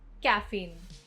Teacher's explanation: Emphasis on second syllable.